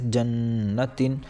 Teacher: یہاں پر نون مشدد ہے، لہٰذا یہ 1 الف کے برابر کھینچ کر اور ناک سے غنہ ہو کر پڑھا جائے گا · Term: حرف غنہ